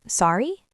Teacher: You can simply say, sorry, with a rising tone to ask the person to repeat.